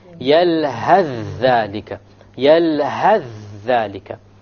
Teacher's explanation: You will drop the tha and move on directly.